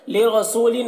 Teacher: रौ को पुर पढ़ेंगे, सू में वाव मद्दा है और लिन यहाँ पर इजहार हो रहा है तनवीन में, इसे जल्द पढ़ेंगे।